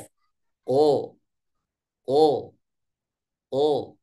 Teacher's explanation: dorongan suaranya agak miring ke atas sehingga ketika keluar suara masih memungkinkan untuk keluar dari mulut misalkan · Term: istil